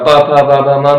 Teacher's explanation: प फ ब भ म में मेरे दोनों होंठ मिल रहे हैं।